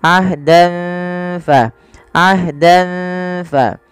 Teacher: Kemudian ahdan falan yukhlifallahu ahdahu am taqulun, pada lafal dan ketemu fa, samarkan tanwinnya kepada huruf fa karena ia bacaan ikhfa yang dimana ada fathatain bertemu dengan huruf fa.